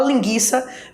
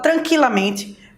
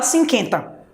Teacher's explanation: Embora existam pessoas que tenham essas variações linguísticas, mas do ponto de vista da norma padrão, a pronúncia oficial caracteriza por o som do U permanecer, embora o trema não exista